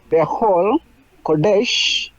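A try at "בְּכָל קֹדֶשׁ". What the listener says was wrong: Nice.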